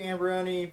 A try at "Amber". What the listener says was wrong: sorry, adding extra syllables.